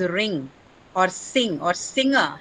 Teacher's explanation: Ng is a nasal velar sound. It's a velar sound, but it also has nasal quality.